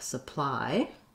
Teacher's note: that y doesn't do the e like these other y's. It does the diphthong I. So just like the word I am, I have, supply.